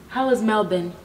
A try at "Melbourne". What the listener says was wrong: Okay, you don't have to say it like that, now you're saying Ben. Melbourne.